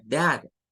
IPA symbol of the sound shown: æ